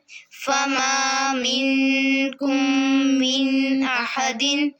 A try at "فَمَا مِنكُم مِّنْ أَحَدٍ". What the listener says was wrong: मिन के ऊपर गुना नहीं करना من أحد